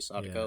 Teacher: the emphasis is usually on the first syllable